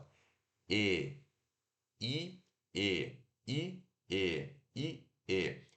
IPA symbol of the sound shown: e